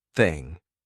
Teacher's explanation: This one, however, is an unvoiced the, so this one goes thing. No voice. There's no buzz in my throat.